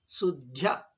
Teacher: ಹಿಂದಿನದ ದ ಅಲ್ಪ ಅಲ್ಪಪ್ರಾಣ ದ ಆಗಿಬಿಡುತ್ತದೆ ಅಷ್ಟೇ ಇಷ್ಟು ಸರಳ ಇದು ಅಂದರೆ ಮಹಾಪ್ರಾಣ ದ ಅಲ್ಪಪ್ರಾಣ ದ ಆಗಿಬಿಡುತ್ತದೆ